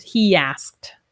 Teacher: With he asked, we link with the Y sound, he asked. So it's almost like we have a Y in there, a Y sound